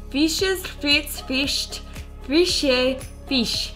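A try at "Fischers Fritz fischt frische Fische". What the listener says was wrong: That was so good.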